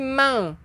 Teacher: Bukan man, tetapi mang. Lidah kita di tengah-tengah, tak kena lelangit. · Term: ikhfa hakiki